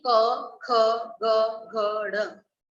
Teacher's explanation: कहाँ से आवाज आई? कंठ से, इसलिए इनका उच्चारण स्थान क्या होगा? कंठ।